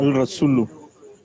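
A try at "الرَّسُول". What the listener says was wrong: It is not al-rasulu, brother. It is ar-rasul. ra is from hurufu shamsiyah. So in this case, lam is getting omitted while pronunciation. Ar-rasulu.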